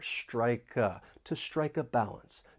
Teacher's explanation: We can link the final consonant sound in strike with the beginning vowel sound in uh and it's almost like we're moving that consonant sound over. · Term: linking